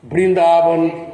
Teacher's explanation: O bengali pronuncia o V como B, tá? Em alguns contextos, no começo das palavras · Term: pronúncia bengali